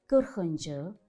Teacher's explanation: fikir verdiyimiz kimi 40 sözündə ı qalın saitdir. Onu artırdığımız şəkilçi də qalındır.